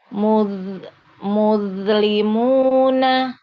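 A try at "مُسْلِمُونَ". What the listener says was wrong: Bagus, Bun, tapi jangan mantul. Muz, jangan muz, jangan begini ya. Muz, ada z-nya, jangan ya. Jangan ada z-nya. Muslimuna ditahan ya, supaya jangan mantul. Langsung masuk ke li, coba.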